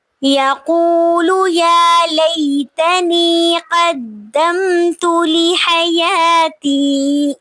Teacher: یا لئی پہ یا لین ہو رہی ہے کیونکہ یا ساکن سے پہلے زبر آ رہی ہے